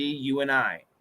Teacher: the N will cancel the D